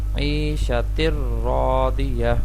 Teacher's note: تن کی بجائے ہم نے اس کو را سے ملا دینا ہے تر، عیشتر راضیہ.